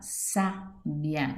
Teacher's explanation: Sílaba tônica, sa, classificação, proparoxítona.